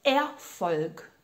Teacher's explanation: tem esse ER que vai dar o som de EA. Exatamente.